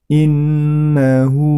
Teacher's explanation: Kemudian innahu, ya, di situ terdapat nun tasydid, maka itu termasuk hukum bacaan gunnah, ditahan dan diperpanjang cara membacanya. Innahu, nah hu-nya itu dibaca panjang 2 harokat